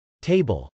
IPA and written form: tˈeɪbəl (table)